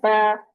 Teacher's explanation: फिर है बा। बा की तरफ होंठों के जो गीला हिस्सा, अंदर वाला हिस्सा, दोनों होंठों का ऊपर नीचे का, वो आपस में मिलता है और मिलके जुदा हो जाता है, अलग हो जाता है, और होंठों को चीर दिया जाता है, यानी जैसे स्माइल करते हैं।